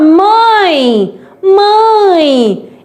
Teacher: esse e tem som de i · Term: semivogal